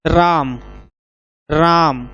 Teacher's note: आप ज्यादा समय लगा के बोल रहे हैं तो यहाँ पे ये आपका प्लुत स्वर होगा